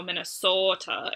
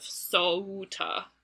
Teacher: instead of being the diphthong [ou] it is just the monophthong or the single sound [o] but, like, lengthened [oː]